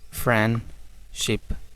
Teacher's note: फ्रेंडशिप, डी बिल्कुल ख़त्म कर दिया जाता है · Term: एलिजन